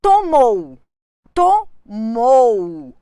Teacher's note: o o funciona como vogal o u como semivogal